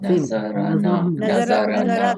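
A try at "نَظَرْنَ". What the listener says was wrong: Nazarna. Nun fatha. Ra will get sukun. No, Ra will get sukun.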